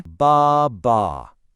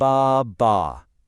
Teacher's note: See how it has two long ah sounds? That means we're pulling that rubber band twice. · You stretch the sound out, out for two beats, and then you release it. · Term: two-beat rhythm